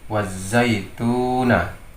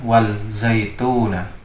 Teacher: Pada contoh berikutnya, alif dan lam atau lam ta'rif bertemu dengan huruf za. Di sini membacanya menjadi idgham, sehingga membacanya wazaituna.